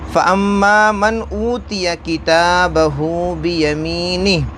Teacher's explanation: میم ہے اور میم کے اوپر تشدید ہے، ناک میں آواز لے جائیں گے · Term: گنہ